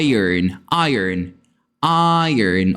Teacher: Aqui nós temos o som do schwa, que é esse E de cabeça para baixo aí colocado na transcrição fonética.